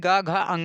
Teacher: तीसरा, चौथा, पांचवा वर्ण सघोष होता है, यानी गा, घा, अंगा ये सघोष वर्ण में आते हैं